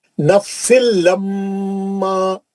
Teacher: نوح الربی، نوح الربی، نوح نہیں بولنا، نوح الربی، تنوین کا ادغام بلا غنہ حرف را. نفس لما، تنوین کا ادغام بلا غنہ حرف لام